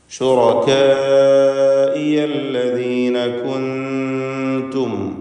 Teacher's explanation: സക്കിനത്താനൂനും ശേഷം താവും ഇഖ്ഫ ഹഖീഖി നൽകി അവ്യക്തമാക്കി മണിക്കണം.